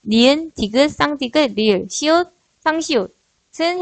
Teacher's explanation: 지읒, 쌍지읒, 치읒은 혓바닥과 입천장 앞쪽에 딱딱한 부분 사이에서 나는 소리이며 히읗은 목청 사이에서 니은, 디귿, 쌍디귿, 리을, 시옷, 쌍시옷은 혀끝이 윗잇몸에 닿아서 소리가 나게 됩니다.